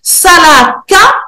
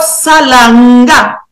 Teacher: Mais on a d'autres exemples où le K donc le son K ou la syllabe K est systématiquement remplacé par un Ga ou inversement